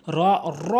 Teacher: এর সঠিক উচ্চারণ হচ্ছে রটি পুর করে জিহ্বার আগাটি উল্টিয়ে উপরে তালুর সঙ্গে লাগিয়ে র, র বলতে হবে র। সঠিক উচ্চারণ হচ্ছে র, র, র না বলে র বলতে হবে।